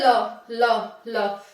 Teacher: वायु जीव के बगल से निकल जाती है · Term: पार्श्विक व्यंजन